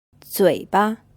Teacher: this word is pronounced with a third tone and the second syllable is unstressed